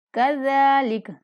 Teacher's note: زال کو نہایت نرمی کے ساتھ پڑھنا ہے اور ایک الف کے برابر لمبا بھی کرنا ہے